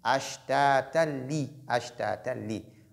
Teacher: lorsque tanwin est suivi de lam, on fait ce qu'on appelle al-idgham bi ghayri ghunna, donc l'assimilation est sans ghunna, sans nasalisation.